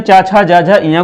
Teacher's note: तालव्य किसको कहते हैं, चा, छा, जा, झा, इया को कहते हैं।